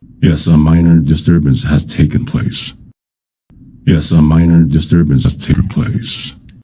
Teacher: I moved the stress, or at least I tried to. By lowering the pitch on taken. This makes it sound less stressed. I also tried to raise the pitch on place, which is normally stressed in this expression.